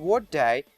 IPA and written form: wɒt deɪ (what day)